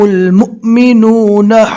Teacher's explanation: والذین آمنوا وهاجروا وجاهدوا فی سبیل اللہ والذین آووا ونصروا اولئک هم المؤمنون حقا۔ مؤمنو یہاں پر جھٹکا دے کر پڑھیں گے، واو کی شکل میں حمزہ آ گیا اور اس کے اوپر جزم ہے